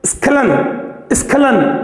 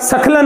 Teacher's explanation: लेकिन इसमें उच्चारण में आगे हल्का सा स्वर का सपोर्ट लेना पड़ जाता है। जैसे आप स्खलन बोलेंगे तो स के आगे हल्का सा स्वर स्वतः ही आ जाता है, और अगर नहीं लेंगे तो उस स्थिति में स पूरा हो जाएगा, सखलन हो जाएगा।